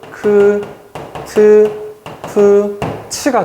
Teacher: 기역, 디귿, 비읍, 지읒 더하기 히읗은 순서랑 상관없이 크, 트, 프, 치가 되거든요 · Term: 자음 축약